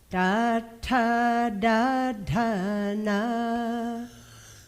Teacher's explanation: Curling the tongue back to the ridgy part of the mouth.